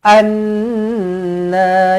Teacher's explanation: Nun sabdu wajibul gunah dengungkan dua harakat